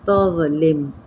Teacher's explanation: یہاں پہ لم کے اندر میم ساکن کے بجائے ہم میم مشدد کے اندر اس کو ہم ملائیں گے